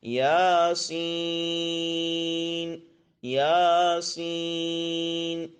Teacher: یا کو پہلے 1 الف کے برابر لمبا کریں، یا، پھر سین کو 3 الف کے برابر، سین، اب اس کو لمبا کرنا ہے اس طرح یاسین، یاسین۔